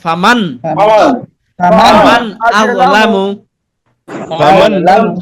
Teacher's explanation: আমরা আওয়াজ কিন্তু ধরে রাখা যাবে না, গুণনা করা যাবে না। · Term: স্পষ্ট করে